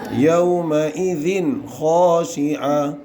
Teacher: ذال کے نیچے 2 زیر کی تنوین ہے، اس کے بعد حروف ہلکی کے 6 حرفوں میں سے خا ہے، اس لیے یہاں پہ اظہار ہوگا